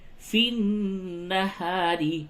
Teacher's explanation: یہ نون مشدد ہے، غنہ کیجئے